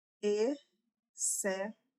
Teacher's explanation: o som do X, ele tá se misturando ao som do C, como se fosse um S, como se fosse o som do S.